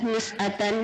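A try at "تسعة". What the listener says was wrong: Tis'atan ya, pakai tak ya?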